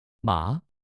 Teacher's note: 第二声像问问题。马，声音向上走